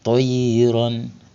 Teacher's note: Ya sukun sebelumnya fathah harf lin. Maka cara bacanya lembut lunak tanpa ada penekanan.